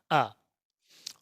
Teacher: मध्य भाग में केवल आ आता है इसके उच्चारण में जीवा का मध्य भाग सक्रिय होता है